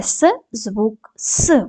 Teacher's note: с звук с приголосний твердий глухий